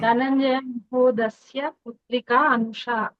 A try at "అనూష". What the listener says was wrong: అనూష, దీర్ఘం, అనూష, ఉత్తమం.